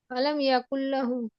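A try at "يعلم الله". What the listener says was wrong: ইউলাতে প্রথমে টান হয় নাই পরে ঠিক করেছেন আর ইয়াতে টান হয়ে গেছে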